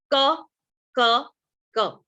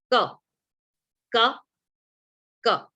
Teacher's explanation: आपकी जीभ का पिछला हिस्सा ऊपर जाके टच होता है। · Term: वीलर